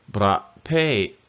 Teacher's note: you want to get that sharp stop in the middle.